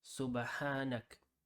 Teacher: But if we were to stop on that word, then we would generally say Subhanak without pronouncing the a on ka. Subhanaka, Subhanak.